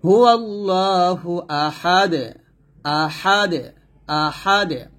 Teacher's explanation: যদি থামেন তাহলে দালটা সাকিন হবে এবং কি করতে হবে, কলকলা করতে হবে দুই পেশ থাকার কারণে।